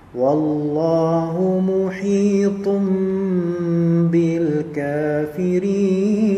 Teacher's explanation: ha di sini lihat dia kasrah kemudian bertemu dengan ya mati, maka dia menjadi mad tabi'i dua harakat